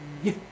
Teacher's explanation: you feel it in your abdomen, you sort of a pushing out of air, but has some vocal cord to it. So it's I, Y.